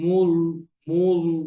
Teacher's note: আমি যদি গোল করে বলি মূল, মূল একটু জি মোটা মোটা ভাব হয়ে যায় লামটা।